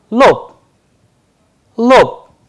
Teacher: the devoicing of consonant at the end, ba is changing into pa. That is why the pronunciation is coming as lob instead of lob.